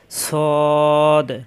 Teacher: সদের মাখরাজ হলো জিহ্বার আগা নিচের দাঁতের চাপ দিয়ে সদ নিচের দাঁতের মাঝখানে অথবা দাঁতের আগায় লাগবে সদ সদ হরকত